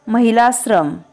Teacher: दोन सजातीय स्वरांऐवजी एकच दीर्घ स्वर तयार होतो